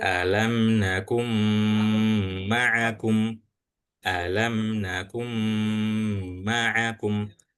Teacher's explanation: setelah huruf kaf ini dibaca itu langsung masuk ke huruf mim dan bacaannya harus ghunah atau dengung